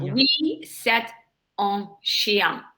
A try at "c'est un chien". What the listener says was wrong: Yeah, but join them together. C'est un. oui, c'est un chien.